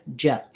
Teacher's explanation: When I'm saying j, my tongue does start in that D position, but I'm not doing any d sound. I'm going right and dropping right into the zh position.